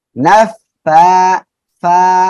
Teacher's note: নিচের ঠোঁটের পেট সামনের উপরের দুই দাঁতের আগার সঙ্গে লাগিয়ে হালকা বাতাস বের করে